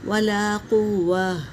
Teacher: تا کو ہا میں بدلیں گے کیونکہ ہم یہاں پر وقف کر رہے ہیں اس لیے۔ ولا قوہ پڑھیں گے۔